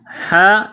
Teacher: گلے کے درمیان سے زور لگا کر ہا کو نکالیں گے